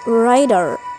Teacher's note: The production of T in the word rider becomes D. This is called flap.